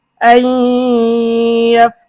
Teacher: নুন সাকিনের পরে ইদগামে বা গুন্নার হরফ ইয়া এসেছে, গুন্না সহ মিলিয়ে পড়তে হবে।